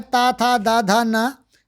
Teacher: हमारी जिह्वा जो होती है वो दांतों से टकराती, इसलिए इनको दंत व्यंजन माने गए हैं।